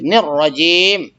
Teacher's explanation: رجیم میں را پر زبر ہے تو اس کو موٹا کریں گے